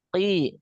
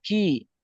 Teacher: Jadi qaf ini dia keluarnya dari aqsal lisan